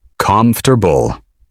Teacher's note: in everyday American English, you'll usually hear comf-ter-ble. Three smooth sounds. Not four.